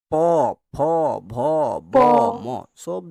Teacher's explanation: প উচ্চারণ করো। দেখো দুটা ঠোট যেন একে অপরে ঝগড়া লাগছে। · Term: ওষ্ঠ ব্যঞ্জন ধ্বনি